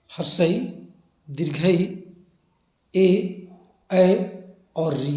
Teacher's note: अग्र स्वर है उसमें जीभ का जो अगला भाग है वो सक्रिय होता है